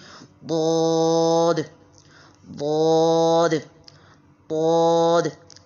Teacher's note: اس کا جو مخرج ہے نا وہ حافۃ اللسان ہے · حافۃ اللسان جب اوپر کی 5 داڑھوں کو لگے، آپ اگر اس پکچر کو غور سے دیکھیں تو آپ کو نظر آ رہا ہوگا کہ اگر آپ کی زبان کا دایاں کنارہ یا آپ کی زبان کا بایاں کنارہ وہ اوپر کی طرف رول ہوگا، زبان کی جو کروٹ ہے نا وہ اوپر کی 5 داڑھوں کے ساتھ لگے گی، رائٹ سائڈ پہ یا لیفٹ سائڈ پہ